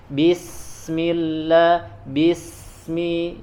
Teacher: Kalau sin dia hams juga dia rokhawah ya, selain dia mengalir suara juga mengalir angin ya. Jadi bismillah, bismi ya harus mengalir.